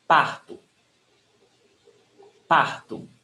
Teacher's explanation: when the word ends in O, it's pronounced as U.